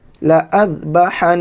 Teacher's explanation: نون کے اوپر تشدید ہے تو گنہ کرتے ہیں۔